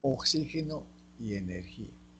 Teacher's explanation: fonema fricativo velar sordo X en las palabras oxígeno y energía